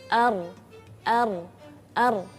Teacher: ya, jadi lidah kita itu enggak datar, jadi ar agak inhiraf. Inhiraf itu miring, tapi ini miringnya agak ketekuk ke belakang. Jadi lenturan ujung lidah condong ke punggung lidah. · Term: huruf ra